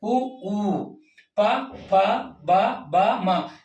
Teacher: ಆಗಿ ಉತ್ಪತ್ತಿ ಆಗತಕಂತ ಅಕ್ಷರಗಳು ಯಾವಪ್ಪ ಅಂತ ಹೇಳಿದ್ರೆ ಉ ನೋಡಿ ಎರಡು ತುಟಿ ಉ ಅಂದಾಗ ಉಸುರು ಸಮೇತ ಎರಡು ತುಟಿಗಳು ಒಟ್ಟಿಗೆ ಆಗ್ತವೆ · ತುಟಿ ಭಾಗ ತುಟಿಯ ಸಹಾಯದಿಂದ ಉಚ್ಚಾರಣೆ ಮಾಡತಕಂತ ಅಕ್ಷರಗಳನ್ನ ಓಷ್ಟ ಅಂತ ಕರೀತೀವಿ ಅಂದ್ರೆ ಎರಡು ತುಟಿಗಳು ಸ್ಪರ್ಶ ಆಗಿ ಉತ್ಪತ್ತಿ ಆಗತಕಂತ ಅಕ್ಷರಗಳು · ಎರಡೂ ತುಟಿಗಳು ಸ್ಪರ್ಶ ಆಗಿ ಉತ್ಪತ್ತಿ ಆಗತಕ್ಕಂತಹ ಅಕ್ಷರಗಳು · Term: ಓಷ್ಠ್ಯ ಅಕ್ಷರಗಳು